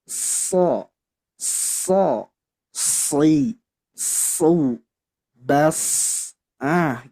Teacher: Nah, jadi so, si, su, bas, gitu ya, tebal banget huruf shad ini karena dia mempunyai dua sifat yang membuat dia tebal, yakni isti'ala dan juga ittobaq